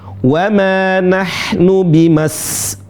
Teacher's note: Qafnya qin, dan bukan dibaca qain. Sebagian teman-teman bimasbuqin, bukan qai, itu seperti huruf ain.